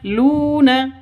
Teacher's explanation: Lu panjang 2 ketukan karena ada wawu mati diawali dengan dhammah. Karena pasangannya wawu mati itu dhammah baru dibaca panjang seperti itu.